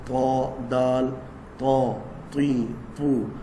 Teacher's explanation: ان دانتوں سے نہیں بلکہ ان دانتوں کی جڑوں سے، جہاں سے دانت نکلے ہوتے ہیں اور وہ مسوڑوں کے اندر چھپے ہوتے ہیں ان کی جڑوں سے لگائیں گے. زبان کی نوک ثنایا علیا کی جڑوں سے لگانا